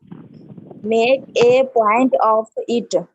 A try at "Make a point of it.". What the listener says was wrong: हाँ जी, मेक ए पॉइंट ऑफ इट। ऐसे नहीं बोलिए, एक साथ इसको बोलिए, जल्दी से बोलिए, मेक अ पॉइंट ऑफ इट। हाँ, मेक अ पॉइंट ऑफ इट। रख लो, जबान पे सेट कर लो।